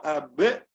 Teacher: ബ് എന്ന് വ്യക്തമാക്കി സുക്കൂന് തന്നെ പറയണം എല്ലാ അക്ഷരങ്ങൾക്കും. അപ്പൊ അബ് എന്ന് ചുണ്ടുകൾ ചേർന്ന് പിന്നെ ആ ശബ്ദം ഇങ്ങനെ വേർപിരിഞ്ഞുകൊണ്ടാണ് നമ്മൾ ഉച്ചരിക്കുന്നത് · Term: ഖൽഖല